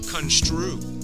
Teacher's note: notice you start to round your lips for the ooh part before you said the stir part